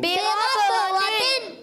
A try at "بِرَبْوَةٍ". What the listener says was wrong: جنة بربوتن غنوں کو پورا کرنا ہے جنة بربوتن